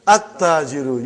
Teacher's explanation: You did not pronounce lam. Why you did not pronounce? Because it is sun letter.